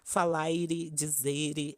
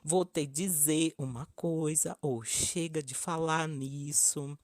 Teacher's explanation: nas palavras as formas infinitivas dos verbos são um bom exemplo os portugueses pronunciam muito claramente o r final dessas palavras e até acrescentam mais alguma coisa exemplo falar ele dizer etc